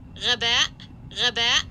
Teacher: And then, interestingly enough, this person caught the voiced uvular fricative at the beginning, but then didn't get this little feature at the tail end. It's got a glottal stop at the tail end, this production. And you can kind of see how she transitions into that by giving you more creaky voice into that stop here at the tail end, which is kind of a cue to the fact that this is glottal.